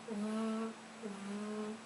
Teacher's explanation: vibrations so if you you for example use the letter V you put your hand on your throat and you make the sound for the letter v v your throat makes vibrations you can feel it right okay so who knows of another